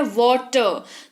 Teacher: तो यहाँ पर टी का उच्चारण ट हो रहा है